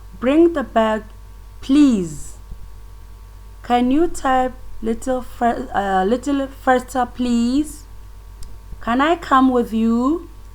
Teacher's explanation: A rising tone, as I explained, we can find them in polite requests. You can see that in these examples, the tone is rising.